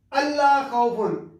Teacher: یہ لفظ اللہ ان لا ہوتا ہے، نون کا لام میں ادغام ہو گیا ہے